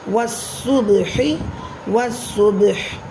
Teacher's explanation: با ساکن ہے اس لیے یہاں پر قلقلہ صغریٰ ہوگا